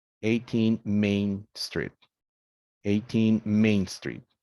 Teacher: Now here it says stress the first syllable of a teen word when the next word begins with a stressed syllable. Stress moves back to avoid two heavily stressed syllables in a row.